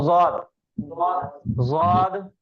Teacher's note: अगर हम पढ़ेंगे ज़ाद तो जुबान के साइड वाला हिस्सा ऊपर के दाढ़ों को लग रहा।